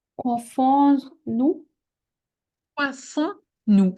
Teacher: The S is not pronounced. What is pronounced is the sound on that is created by the O and the N together.